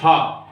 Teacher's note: हा का जो उच्चारण स्थान है वह इस चौथे वर्ग में आएगा। हा में ये चौथे वर्ग में होगा, सघोष महाप्राण है। यह सघोष महाप्राण है होता है। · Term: काकल्य व्यंजन